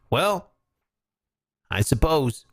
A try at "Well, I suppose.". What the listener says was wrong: Well, You added a syllable even. You just have to say, well, I suppose. Well, I suppose.